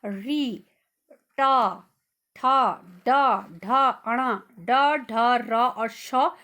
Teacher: जब मैं बोल रही हूँ तो मैं महसूस कर रही हूँ कि मेरी जीभ मुड़ रही है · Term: मूर्धन्य वर्ण